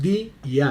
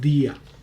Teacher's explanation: No son dos, o sea, no es di y a, no, es día unido. Entonces es una sola.